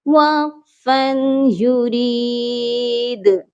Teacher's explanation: دال پر رکے ہیں آ کر، دال کو ہم نے سائلنٹ کیا ہے تو دال پر قلقلہ لازمی ہوگا